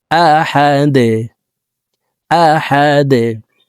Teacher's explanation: দাল দুই পেশ দুন, আহাদুন। দাল কলকলার হরফ নিচের দিকে ধাবিত করে ধাক্কা দিয়ে সাকিন করব।